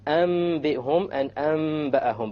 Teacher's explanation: You convert the noon to the meme with a ghunna. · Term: iqlab